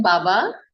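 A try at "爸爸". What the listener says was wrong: बाबा नहीं पढ़ना, इसे पापा। ये बी जहाँ पे चाइनीज में पिंगियन में लिखा होगा ना, पी पढ़ना है इसका तलफुज।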